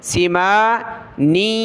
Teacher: نون کو آگے جو ہے یا کے ساتھ ملائیں گے ناک میں آواز پیدا ہوگی